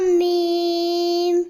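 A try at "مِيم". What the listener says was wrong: میم کے آخر میں غنہ نہیں کرو، میم،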